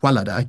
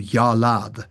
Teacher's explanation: one very specific phonological change that happened in all Northwest Semitic languages is the change of initial w to y